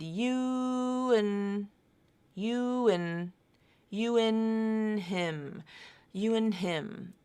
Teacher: I've reduced the word and a n d it's a conjunction I've reduced it to just the N sound